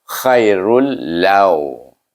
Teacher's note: Sebab nun sukun atau tanwin bertemu dengan huruf ra atau lam, dia akan dibaca dengan idgham tetapi bila gunnah, tanpa dengung